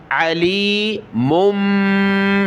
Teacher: بڑی میم کو چھوٹی کے ساتھ ملائیں گے، یہاں بھی ناک میں آواز پیدا ہوگی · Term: چھوٹی میم